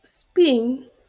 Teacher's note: in the word spin, the same letter P is unaspirated.